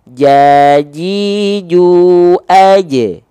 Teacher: Karena huruf jim sifatnya adalah jahar. Jahar itu artinya tertahan nafas dia. Wah, tertahan nafasnya.